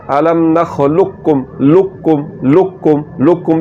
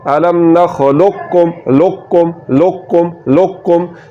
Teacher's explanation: تو اس کو کیسے پڑھنا ہے، الم نخلقکم، لقکم کیسے پڑھنا ہے، نخلقکم لقکم لقکم، یہ موٹا کاف پڑھا جا رہا ہے، لقکم لقکم۔ دو نقطوں والا کاف جس کا مخرج زبان کی جڑ اور تالو کا نرم حصہ ہے